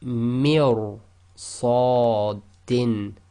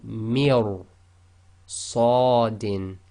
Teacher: you've got to go straight from the mi, which is empty mouth, directly into ra, which is full mouth. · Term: tafkhim